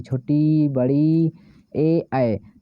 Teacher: देखिए, आप जब बोलते हैं तो देखिए आगे की ओर, आपके जिह्वा के आगे की ओर से आवाज़ आती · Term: अग्र स्वर